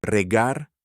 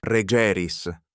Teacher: In the first person singular, the vowel is short, a. and in every other form, it is long, ē.